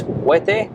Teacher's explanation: As we know in Spanish, the H is silent, so you don't pronounce the H. It's not Huete, it's Huete.